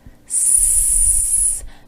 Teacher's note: There's no vibration when you say the S sound. You won't feel anything in your throat. That's because the voice is off. So you can talk about the voice being on, and off.